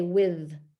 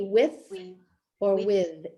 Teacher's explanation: the th could be voiced or voiceless in this particular word